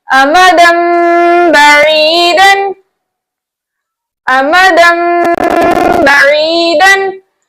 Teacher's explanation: आपने देखा दो जबर की तनवीन के बाद हर्फ बा आया तो हमने दो जबर की तनवीन की नून की आवाज को मीम से बदलकर इख्फा शफी के साथ अदा किया। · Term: इखलाब